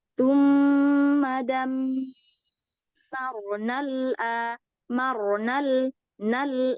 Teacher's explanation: ketika matobi'i bertemu dengan hamzah wasol, maka dia hilang matobi'inya, Bu. Hanya 1 harokat aja.